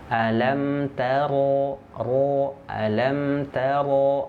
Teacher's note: Huruf ra itu makhrajnya keluar dari ujung punggung lidah, naik ke langit-langit.